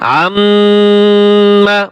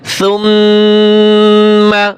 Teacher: নাকের ভিতর থেকে একটা গুনগুন আওয়াজে একটা গুনার শব্দ আসে